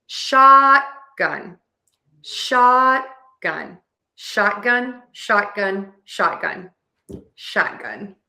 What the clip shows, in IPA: ˈʃɑtˌgʌn